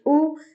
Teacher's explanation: हमजा गले के बिल्कुल निचले हिस्से से अदा किया जाता है। एक अचानक और साफ आवाज के साथ। यानी कि हमजा एक क्लियर और स्ट्रांग लेटर है।